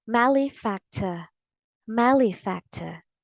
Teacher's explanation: the first syllable is stressed in both American and British English